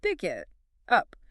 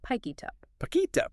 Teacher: The K sound at the end of pick jumps to the I in it. · It sounds less like a three-word phrase and more like a single three-syllable word. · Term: consonant-to-vowel linking